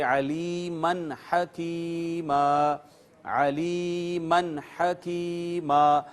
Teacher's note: دیکھ لیجئے نون تنوین آ گئی میم کے اوپر اور یہاں پہ اخفا ہونا چاہیے تھا، علیمن ہم کہتے، لیکن آگے چونکہ ہا آ گئی اور ہا حروف اظہار میں سے ہے، لہٰذا یہاں پر اخفا نہیں کریں گے، اظہار کریں گے اور اس کو بغیر آواز چھپائے ظاہر کر کے پڑھیں گے نون تنوین کو اور کہیں گے علیمن حکیما، علیمن حکیما۔